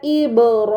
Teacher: Di sini terdapat ba sukun. Ba itu termasuk huruf qalqalah. Maka bacanya harus dipantulkan